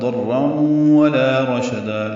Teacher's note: ضاد را دونوں پر ہیں اور تنوین کے بعد واو آنے کی وجہ سے ادغام ہوا ہے، ادغام ناقص ہے، غنہ ہوگا